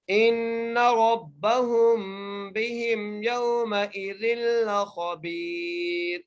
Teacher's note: سے پہلے حرف کو دیکھیں گے اس کے نیچے زیر ہے، تو یہ را باریک ہوگی وقف کی صورت میں